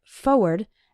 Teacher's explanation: But when you're writing it, you need to include the R, F-O-R-W-A-R-D. Again, when speaking fast, we sometimes say it like forward, as if there wasn't that first R